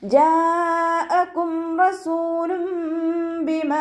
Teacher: മദ് വാജിബ് മുത്തസിൽ 4 or 5 count നിർബന്ധമായിട്ട് നീട്ടി കൊടുക്കുക കേട്ടോ